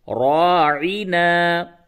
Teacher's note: را کے اوپر زبر ہے، اس کو پر کر کے موٹی آواز سے پڑھیے